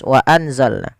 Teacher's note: Kalau pada dasarnya kita membaca wa anzalna, karena dia bacaan ikhfa, ikhfa itu membaca di antara idgham atau izhar dan idgham. Kalau izhar itu berarti suara n-nya apa suara nun-nya jelas